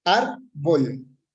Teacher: Se acentúa en la penúltima sílaba y por lo tanto se tilda.